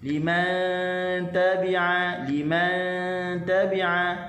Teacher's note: Okey, illa liman tabi'a, nu mati bertemu dengan ta, hukumnya adalah ikhfa. Ikhfa di sisi huruf ta, dan dalam keadaan kita kena nipiskan huruf nun. Liman tabi'a, liman tabi'a.